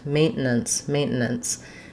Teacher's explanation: It's the S sound. And so I kind of go from N to S at the end.